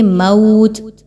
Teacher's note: واو پر جزم کا نشان اور اس سے پہلے والے حرف میم پر زبر، 2 الف کے برابر اس کی ادائیگی رکھیں گے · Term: واولین